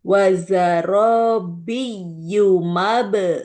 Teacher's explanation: jadi tidak panjang di B-nya. Langsung tekan, Bu. Wazarobiyumab.